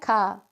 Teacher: अघोष भी है और महाप्राण भी है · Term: अघोष महाप्राण